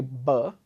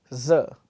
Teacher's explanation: I'm completely stopping the flow of air versus I have to say sir I'm kind of letting air partially through the teeth